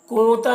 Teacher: نون میں اخفا ہوگا، نون ساکن کے بعد تا ہے حروف اخفا میں سے